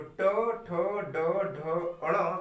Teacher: जैसे अगर हम टा बोल रहे हैं तो टा के उच्चारण के दौरान आप महसूस कर सकते हैं कि आपकी जो जीभ है वह कुछ टेढ़ी होकर आपके ऊपर वाले भाग को टच कर रही होती है, जिसे हम कहते हैं मूर्धा।